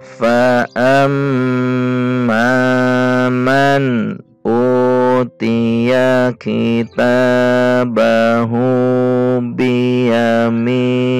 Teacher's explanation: Mim bertasydid dibaca gunnah atau dengung, harus dibaca panjang.